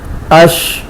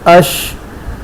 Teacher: اس کے بعد اگلی جو صفت ہے تفشی، یہ شین میں پائی جاتی ہے. شین کی ادائی میں آواز منہ میں پھیلتی ہے